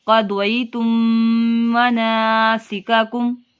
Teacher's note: میم ساکن کے بعد دیکھیں میم ہے، گنہ کریں گے